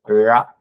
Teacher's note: நாக்கு நல்லா வளைஞ்சு நுனி நாக்கு வளைஞ்சு லகரத்தை சொல்ற இடத்துக்கும் பின்னாடி போய் நின்று பிறக்கணும். இங்க ழகரம் சொல்லும் போது நுனி நாக்கு வந்து மேல அன்னத்தை தொடணும் அப்படின்னு அவசியம் இல்லை.